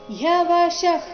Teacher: ಶದ ನಂತರ ಇರೋ ವಿಸರ್ಗ ಉಚ್ಚಾರಣೆ ಅರ್ಧ ಖ ರೀತಿ ಬರಬೇಕು